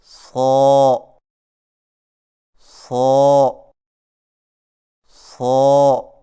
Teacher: صاد کو ادا کرتے وقت شروع والی آواز کو باریک نہ کریں